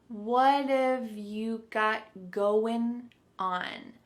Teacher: Instead, you're going to hear a reduction or a contraction of the first two words, just like we saw with the previous example, would of. So, what and have are going to be pushed together.